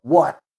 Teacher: O T é engolidinho, tá? A sua língua finaliza tocando o céu da boca, ali fazendo um som do T mudo assim, ó. Antes de soltar o ar, você trava ele com a sua língua.